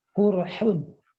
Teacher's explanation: Imam Su'bah membaca dengan mendomakan huruf qaf